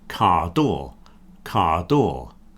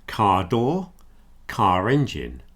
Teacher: You don't hear the R on car door.